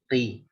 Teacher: Qaf ketika kasrah itu pipih